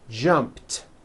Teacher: jump becomes jumped with a t sound at the end jumped of course the word is spelled with an ED ending